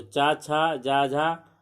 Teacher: चा, छा, जा, झा को जो दिया जाता है मुखांगों के व्यवहार के आधार पर नाम, उसे तालव्य कहते हैं